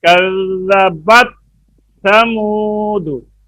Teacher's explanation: تا ساکن کے بعد جب تھا آتی ہے تو اکثر دھیان نہ رکھنے سے تا تھا میں مدغم ہو جاتی ہے، جیسے کذبت ثمود نہیں ہے، کذبت ثمود، اور آپ نے اس کا دھیان نہیں کیا۔ کذبت تا میں آواز بند ہو جاتی ہے